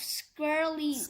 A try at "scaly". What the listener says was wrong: Scaly, not scally, scaly.